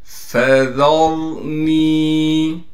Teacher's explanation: فذرني، فا کو صاف کر کے پڑھنا ہے، ذال کو را سے ملائیں گے اس لیے کہ را ساکن ہے، اور را کو موٹا کر کے پڑھیں گے اس لیے کہ را سے پہلے زبر ہے۔ نون کو واو سے ملائیں گے اور نون کو ایک الف کی مقدار کھینچیں گے اس لیے کہ نون کے بعد حروف مدہ میں سے یا آ گئی۔